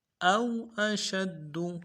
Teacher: حمزہ کو واو کے ساتھ ملانا ہے ، واو کو نرمی سے ادا کریں گے، واو لین ہے،